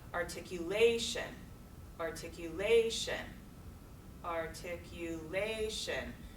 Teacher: not until that fourth syllable do we hear that primary punch that primary stress